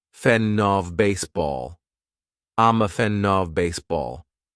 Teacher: they would connect fan with the next phrase